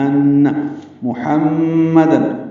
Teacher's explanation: میم مشدد پہ غنہ ہوگا